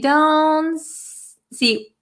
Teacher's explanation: It's called a held T, where we our tongue goes in the position of the T, but we don't aspirate the T.